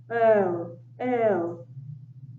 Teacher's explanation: If you notice your vocal cords vibrate, you will notice, right, a slight vibration in your neck, throat. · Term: voiced sound